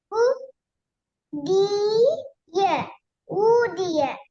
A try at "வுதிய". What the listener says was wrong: வு நீட்டையிலுமா? இல்ல அப்ப நீட்டாம சேர்ங்க பாப்போம்.